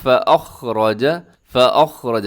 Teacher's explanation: عنہا، عنہا، آگے فَأَخْرَجَهُمَا، فَأَخْرَجَ، یہاں حمزہ ہے، حمزہ کی آواز کو ذرا بڑا واضح کر کے آپ نے پڑھنا ہے، فَخْرَجَ نہیں پڑھنا بلکہ فَأَخْرَجَ، فَأَخْرَجَ، خا بھی موٹا پڑھا جائے گا، آگے را ہے وہ بھی موٹا پڑھا جائے گا